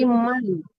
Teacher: Man huruf di izhar itu ya. Man hua harus jelas nun matinya kalau diizharkan gitu ya